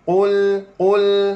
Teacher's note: Ha qaf dhammah muncur mulut. Lam mati senyum balik.